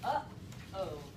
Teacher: We stop the air in our throat. It's a glottal stop